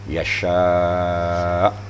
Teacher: makhrajnya antara lidah dan langit-langit tengah. Langit-langit tengah dan lidah tengah.